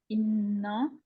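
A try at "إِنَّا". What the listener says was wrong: नून को मोटा ना करे, इन्ना, इन्ना। अकमल गुन्ना हो रहा है।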